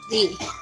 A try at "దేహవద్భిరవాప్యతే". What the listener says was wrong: ది కాదు తల్లి భి